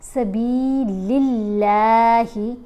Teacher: یہاں پر اس لام کے نیچے زیر آ رہی ہے نا، اب اللہ کی لام کو ہم نے موٹا نہیں پڑھنا